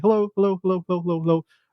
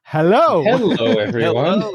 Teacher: a lot of times you don't even hear the vowel between the h and the l